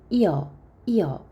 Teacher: 안에 반 모음이 숨어 있어요 그래서 반모음이가 첨가됐다 이렇게 얘기합니다 왜냐하면 이중모음 여는 반모음 이와 어를 빨리 발음하는 거니까